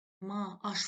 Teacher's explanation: səs uzanması hadisəsi baş verdiyi üçün burda bir sait var